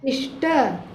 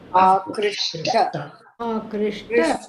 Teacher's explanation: The dental again changes into the corresponding cerebral.